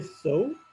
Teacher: The first one is OU, O and U. The production starts with O and it moves towards U.